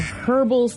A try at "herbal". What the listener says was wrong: You pronounce the H in that word. Instead of herbal, it's herbal. I've never heard the huh pronounced.